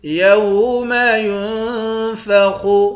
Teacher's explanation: یا کو نون کے ساتھ ملا کر نون پر اخفا کریں گے، خا کو موٹا پڑھیں گے۔